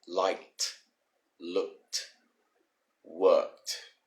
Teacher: But then when you get to the end, remember the E disappears and you put pressure on the D to make it sound like a T sound